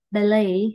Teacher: Thì cái âm T nó là âm câm.